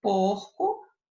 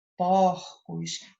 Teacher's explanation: no singular, o som era fechado e quando eu passo para o plural, né? Esse plural que é chamado de plural metafônico, eu tenho aqui o som aberto.